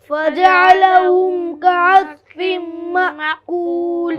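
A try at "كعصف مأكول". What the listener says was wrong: हाँ, कास्फिम पढ़ रहा है, नाज़रीन ध्यान देंगे इसको, ये गलती नहीं होना चाहिए। कास्फिम सीटी की आवाज़ आएगी और स्वाद को पुर भी पढ़ा जाता है। हाँ, हमजा साकिना को भी झटके से अदा किया जाता है। मअकूल, यहाँ रुकेंगे तो मद होगा, यहाँ पर 3-4 अलिफ के बराबर इसको हम खींचेंगे और लाम को साकिन करेंगे, उसको वक्फ कहते हैं।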